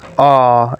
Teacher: It's a long mid central unrounded monophthong